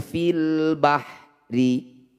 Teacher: lam sukunnya dibaca jelas semuanya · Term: alif lam qamariah